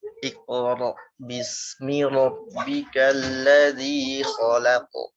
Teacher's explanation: Pertama qaf, tebal, lam tipis, terus kemudian pantulannya huruf qaf. Pantulannya menebal.